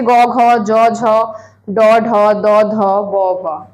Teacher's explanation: প্রত্যেকটা বর্গের তৃতীয় ও চতুর্থ যে ব্যঞ্জন ধ্বনিগুলো আছে এগুলোকে আমরা বলবো ঘোষ ব্যঞ্জন ধ্বনি